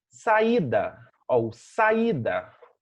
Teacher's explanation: temos um hiato porque são duas vogais pronunciadas separadamente